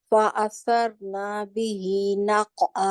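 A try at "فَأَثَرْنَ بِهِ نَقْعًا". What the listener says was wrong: रा को मोटा करें। फ़असरना बिही नक़आ, फ़असरना बिही नक़आ। आपकी गलती कहाँ है, मुझे आप बताएं। नून के ऊपर, नून के आगे अलिफ है,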